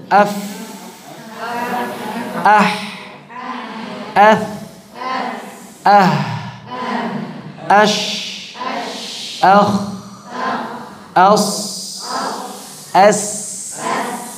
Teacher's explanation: pada saat kita mengucapkan fahathahu syakhsun sakat, maka selalu diiringi dengan udara yang mengalir deras. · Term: hams